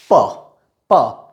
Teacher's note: प तो इसको प्रोड्यूस करने के लिए दोनों होठ हम मिलाते हैं। We touch both the lips and then we produce it. First of all, we stop the air inside of the mouth, we trap it, and then we let air go out of the mouth.